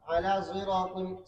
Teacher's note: صاد کے اندر انہوں نے ذا کا اشمام کیا